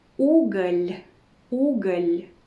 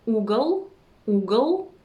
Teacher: You see the soft sign in the end? So it makes the consonant L sound softer, right?